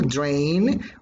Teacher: this vowel sound a becomes nasalized when it occurs before an a cell sound the nasal sound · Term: nasalization rule